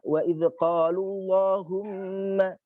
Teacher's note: yang punya sifat tebal itu lafaz jalalah ketika dia sebelumnya berharokat dhammah